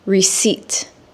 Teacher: when a native English speaker says receipt, the P is silent or it's omitted